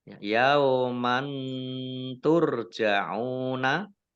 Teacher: Fathah tanwin bertemu dengan huruf ta, bacaan ikhfa, dibaca samar-samar.